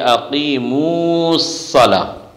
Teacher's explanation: من جملہ وصل کے احکام میں سے یہ بھی ہے کہ حرف مدہ کو حذف کر دیا جائے